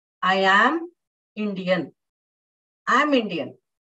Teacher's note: I am stressing on the word am.